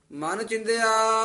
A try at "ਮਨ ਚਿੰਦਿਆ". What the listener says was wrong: ਚਿੰਦਿਆ ਪੋਲਾ ਨਹੀਂ ਬੋਲਣਾ ਉਤੇ ਟਿੱਪੀ ਲੱਗੀ ਹੋਈ ਹੈ